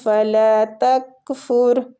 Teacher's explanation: فتنتن، فتنتن فلا تکفر، یہ کاف باریک ہے. را جو ہے ساکن، اس کو بھی پور پڑھنا ہے فا کی دمہ کی وجہ سے